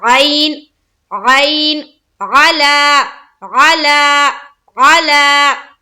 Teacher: ये जो हर्फ आइन है ये पूरे साफ और वाज़ेह तौर पर अदा होनी चाहिए। ऐसा ना लगे कि यहाँ पर आप हमजा पढ़ रहे हैं। तो आइन को बिल्कुल हलक से निकालना है।